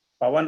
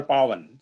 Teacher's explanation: सो पवन में पा छोटा है, पावन इज बड़ा है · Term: दीर्घ स्वर